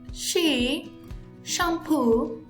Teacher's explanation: fricative voiceless and is palatal